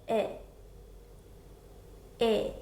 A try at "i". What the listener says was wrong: Relax your lips more.